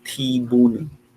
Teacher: So the aspirated part here is at the first syllable. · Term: aspirated sounds